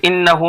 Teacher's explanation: انہ میں گنہ ہو رہا ہے، کیوں گنہ ہو رہا ہے؟ اس لیے کہ نون مشدد ہے، نون کے اوپر تشدید ہے، نون یا میم پر تشدید ہوتا ہے تو وہاں گنہ کر کے پڑھتے ہیں.